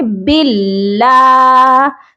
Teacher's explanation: جب اللہ کے لام سے پہلے زبر ہو تب موٹا پڑھا جائے گا، پیش ہو تب موٹا پڑھا جائے گا. اب اللہ کے لام سے پہلے زیر ہے، اسی لیے آپ نے اس لام کو باریک پڑھنا ہے